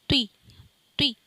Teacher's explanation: توی واؤ کا ساؤنڈ نہیں آئے گا